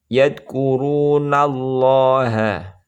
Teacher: yadkurunallaha lam jalalah dibaca tebal